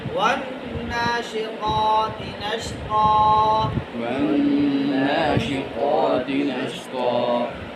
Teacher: اب طا موٹا ہے اور تا باریک ہے، ان دونوں میں فرق واضح کرنے کے لیے آپ کو دہرائی کی ضرورت ہے۔